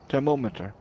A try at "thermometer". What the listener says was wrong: Thermometer. You put like a lot of emphasis on the mo.